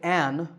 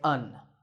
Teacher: in speech we don't say an we say un